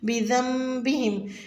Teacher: बिदम्बिहिम में दाल को नरमी से अदा करें और नून साकिन पर गुन्ना की आवाज़ के साथ पढ़ें